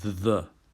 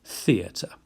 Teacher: it's actually a TH sound from the word the, very much to be distinguished when you get a hard TH like theatre